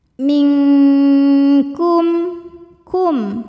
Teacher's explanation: bunyi nun disamarkan siap-siap menuju kaf disertai bunyi dengungan. Dan ini dengungnya besar ya karena kaf makhrajnya jauh dari nun. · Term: ikhfa, ikhfa ab'ad